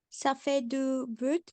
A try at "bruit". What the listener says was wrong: So same thing here. The final letter isn't pronounced. would say bruit.